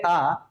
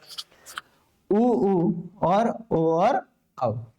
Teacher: पश्च स्वर मतलब पीछे वाले हिस्से का, जीभ के पीछे वाले हिस्से का ज्यादा प्रयोग किया जाएगा। तो अगर आगे देखें पश्च स्वर में कौन कौन से वर्ण आएंगे, तो आ छूट गया था, आ उच्चारण करोगे आ, तो पीछे वाला हिस्सा है ना, ना तो बीच वाले का ज्यादा प्रयोग है ना ही आगे वाले का।